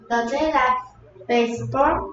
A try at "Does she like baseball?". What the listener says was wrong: Does he 아닌 것 같은데요. 히하고 시하고 구분하세요.